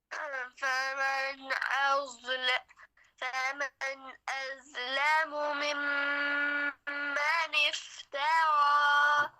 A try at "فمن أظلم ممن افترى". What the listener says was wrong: एज, ये जाल बन गई, वो थोड़ा सा मोटा पड़े, आपने सीटी से बचाने की कोशिश की है, बहुत अच्छा, लेकिन मोटा भी करना है। अज़लमु, जब आप मोटा करते हैं तो सीटी थोड़ी सी आ जाती है माश।